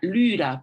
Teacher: Esta Y viene de la Y, y esta Y sonaba como una U francesa, o más fácil, sonaba como si yo quisiera decir U, pero pusiera la boca como si fuera a decir I